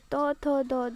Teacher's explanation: ଜିଭଟି ଦାନ୍ତରେ ଲାଗିଥିବାରୁ ତାହାକୁ ଦନ୍ତ୍ୟ ବର୍ଣ୍ଣ କୁହାଯାଏ